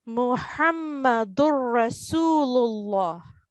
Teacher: So when we apply the rule of idgham bi ghayr al-ghunna, tanween would not be pronounced, and only one stroke of dhamma on top of dal will join with Ra.